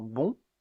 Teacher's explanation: le O ouvert nasalisé, comme dans bon